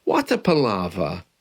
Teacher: There's an R at the end of that, a silent R.